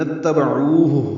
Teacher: عین وسط حلق سے ادا ہوگا، ہا اقصی حلق سے ادا کریں گے